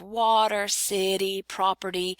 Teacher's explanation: So in the middle of water, city, property, you hear that kind of D, almost a D sound in there. So the flap is where it's spelled with a T, but sounds like a D.